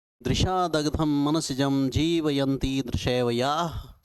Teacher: देखो द न स त ल एक ही उच्चारण स्थान वाले आ रहे हैं बार बार। अब देखो तालु वाले भी आ रहे हैं, यहाँ पे तालव्य वर्ण भी आ रहे हैं। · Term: दंत्य वर्ण